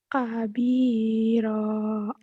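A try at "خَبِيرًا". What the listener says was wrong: Bukan kabiro, khobiro ya. Khobiro.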